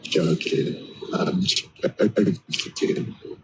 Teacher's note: So for the end, or for both Jokins, if you should move the tongue up to the roof of the mouth behind the teeth there for the N in Jokin. Jokin.